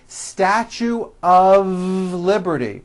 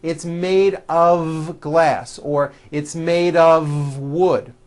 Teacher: Even though the word of is spelled with an F, we pronounce the word of with a voiced V.